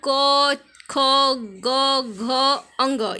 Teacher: क, ख, ग, घ, अंग, ये सब क्या है, कंठ से स्पर्श करते हैं।